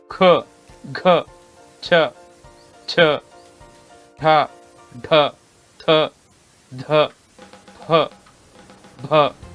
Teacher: ಇವುಗಳ ಉಚ್ಚಾರಣೆ ನಮ್ಮ ಹೊಟ್ಟೆಯ ಹೊಕ್ಕಳ ನಾಭಿಯಿಂದ ಉಸಿರನ್ನ ತೆಗೆದುಕೊಂಡು ಹೇಳುವಂತಹ ಮಹಾಪ್ರಾಣಾಕ್ಷರಗಳಾಗಿರುತ್ತವೆ